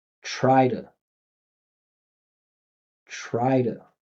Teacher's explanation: surrounded by vibration, don't stop the vibration. Just keep the vibration going. And that T will turn into a soft D. And we finish with the schwa inside of the body.